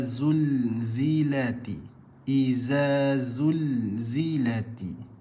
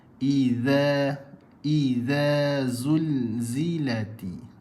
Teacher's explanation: Huruf zal pula kalau tak keluarkan, dia akan jadi huruf zai.